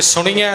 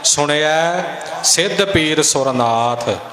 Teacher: ਨਾਣੇ ਨੂੰ ਸਿਹਾਰੀ ਲੱਗੀ ਐ, ਸੁਣਿਆ, ਤੇ ਐੜੇ ਦੇ ਦਲਾਵਾਂ ਦੇ ਨਾਲ ਬਿੰਦੀ ਵੀ ਨਹੀਂ ਲਗਾਉਣੀ, ਬਿੰਦੀ ਤੋਂ ਬਿਨਾਂ ਬੋਲਣਾ ਹੈ